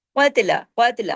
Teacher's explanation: قاف ہیوی تا باریک لیکن جماؤ کے ساتھ